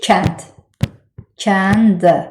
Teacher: O zaman K səsi verir ki, özündən sonra incə sait gəlsin.